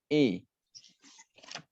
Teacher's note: Imalah tadi seperti saya bilang, imalah adalah harokat di antara fathah dan kasrah. Jadi kalau bunyinya seperti bunyi huruf E dalam bahasa Indonesia.